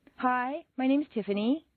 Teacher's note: Not every American uses the downward staircase. A certain segment of the population uses rising staircases, generally teenagers on their way to the shopping mall.